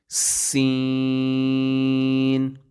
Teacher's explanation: سین پر ایک تو مد ہوگا اور دوسرا سیٹی کی آواز نکلے گی